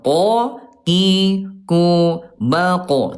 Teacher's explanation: Huruf qaf ayah Bunda dari segi udara dia punya sifat hurufnya namanya jahr. · Qo, qi, ku, ba, qo tidak ada udara ya. Nah, Bunda hati-hati huruf qof. Kalau ada udara nanti hurufnya ayah bunda akan tertukar dengan kaf